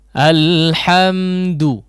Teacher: dal meskipun di dhammah maka perlu diperhatikan ketipisannya ya, harus ditipiskan, jangan sampai lari kepada huruf dhad misalnya ya. Alhamdu, du la, tapi du saja ya.